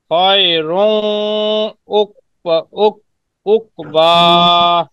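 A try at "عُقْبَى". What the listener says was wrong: হ্যাঁ, মাশাআল্লাহ, আপনার ঈদগাম ঠিক আছে, তবে কলকলাটা আরেকটু বলেন। কফ, উকবা, উকবা।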